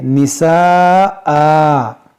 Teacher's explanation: اب رکیں گے ہم تو اس دو زبر کو ہم الف سے بدلیں گے